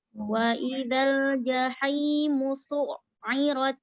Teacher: Ditahan di ainnya ada tasydid.